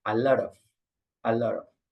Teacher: Especially in America, in the United States, this T is like an R